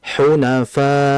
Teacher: Sebab kalau kita baca hunafa, kalau kita baca itu enggak ada hamzahnya ya. Ini ada hamzah dan hamzah memiliki sifat syiddah. Syiddah itu kalau bahasa sayanya itu rem mendadak gitu ya.